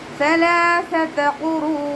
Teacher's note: നമ്മുടെ നാവിൻ്റെ അറ്റവും മേലെ മുൻപല്ലിൻ്റെ അറ്റവും ചേർന്നിട്ടാണ് സാ പുറപ്പെടുന്നത്. കുറച്ച് നാവിൻ്റെ കുറച്ച് ഭാഗം പുറത്തോട്ട് കാണുന്ന രൂപത്തിൽ വെച്ചിട്ട് കുറച്ച് എയർ പുറത്തോട്ട് പോകുന്ന സൗണ്ടും കൊടുക്കുക കേട്ടോ.